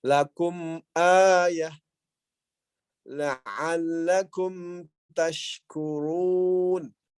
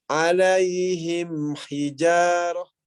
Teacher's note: Huruf mimnya itu enggak samar ya. Jelas pengucapan huruf mimnya.